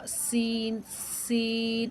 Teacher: اب اس میں آپ نے دیکھا سیٹی کی آواز نہیں نکلی، لیکن سین پڑھتے وقت سیٹی کی آواز نکلتی ہے